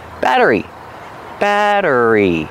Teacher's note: the Double T changes to a fast D batter batter plus the r re and the long e sound